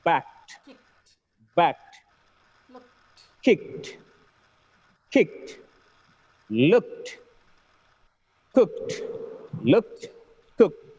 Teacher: wherever the word ends with k sound, when it gets ed form, the last sound should be t